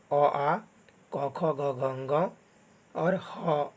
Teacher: कंठ से उच्चारण होता है ये सारे वर्ण